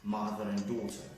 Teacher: I used weak form of and, which is n